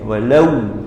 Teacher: sifat huruf waw ni mesti muncul bibir.